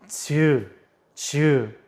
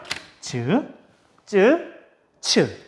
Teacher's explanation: 지읒은 혀가 혓바닥이 뒤로 쫙 밀리면서 센 입천장 가운데 쪽에 가까이 가요. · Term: 센 입천장 소리